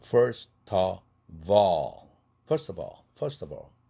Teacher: first의 t는 플랩 되지 않는 이유가 앞에 모음이 없죠. 스라는 자음이 있으니까 뒤에 모음만 있어서는 플랩 될 수가 없죠. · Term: 링킹